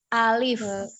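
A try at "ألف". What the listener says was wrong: A-nya tidak diayun, tidak alif, tidak alif. Alif. Pendek ya.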